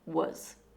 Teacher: In both I was and it was, the word becomes wuz. This is the schwa sound. As I said before, the schwa is a weak, relaxed, uh, sound.